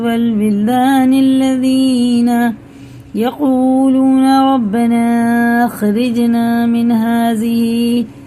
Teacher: مد متصل، کیونکہ مد کے بعد کیا رہا حمزہ، یہ 4 الف کے برابر ہمیں کھینچ کے پڑھنا ہے